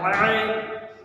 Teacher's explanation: عین حلق سے یہاں سے نکلے گا، ایک دم نیچے سے نکلے گا حلق سے